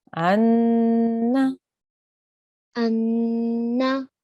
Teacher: we should try to feel the air in our nose when we are holding on the noon sound. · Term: nun gunna